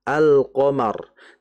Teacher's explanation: Nah, sehingga yang perlu kita ketahui adalah ketika lam mati bertemu dengan huruf di antara huruf idhar, maka lamnya harus dibaca jelas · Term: idhar al-qamariyah